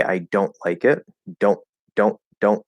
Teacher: there might be a little bit of a nasal there it's okay but we still have the t it's a stop t